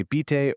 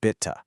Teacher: the i is short and that e at the end is our soft uh